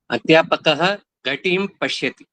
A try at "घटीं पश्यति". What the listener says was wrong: घटीम पश्यति, इसको ई को थोड़ा खींचना पड़ेगा, नहीं तो हरस्व जैसा कभी कभी हो जाता है। और ईकार अंत में लगभग ये समस्या आती है, सरस्वतीम न कह के सरस्वतीम, लगभग ये वाचन मिल रहा है।